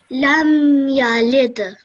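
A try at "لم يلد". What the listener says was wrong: Perfect. That was really, really good, mashallah. Well done.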